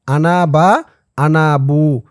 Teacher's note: আনার পরে বা থাকলে টান দিয়ে পড়তে হবে